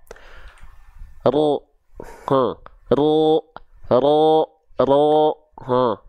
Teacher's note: huruf ro itu dilafalkan teman-teman sekalian bukan dari ujung lidahnya banget bukan dari sininya banget tapi dari bagian punggungnya Nah jadi bukan bagian ininya ya bukan bagian ininya tapi bagian